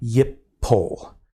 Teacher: But what a first nun verb will do is that nun is going to assimilate to the second root letter, which means that the prefix form will not be yin pol, but will be yip pol.